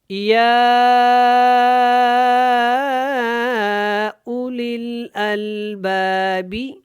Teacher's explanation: یہاں پہ مد کو آپ نے کھینچ کے پڑھنا ہے اور پھر آگے آپ نے حمزہ کو ادا کرنا ہے۔ یا اولی الالباب لعلکم تتقون، لعلکم، عین کو حلق سے ادا کریں گے۔